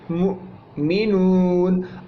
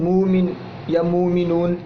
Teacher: ٹھیک ہے، تو عربی میں اصل تلفظ جو ہے اس کا وہ ہے مؤمنون، یعنی حمزہ کو ساکن حالت میں جھٹکے سے پڑھا جاتا ہے. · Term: حمزہ ساکن